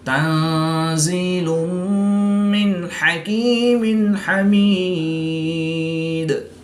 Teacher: وقف کی حالت میں دو زیر کی تنوین کو ساکن کر دیں گے تو یہاں پر وقف کی حالت میں مد عارض ہوگی اور دال پر قلقلہ صغریٰ کر کے پڑھیں گے۔